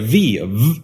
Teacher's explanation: you bring your bottom lip up to your upper teeth and you do let them touch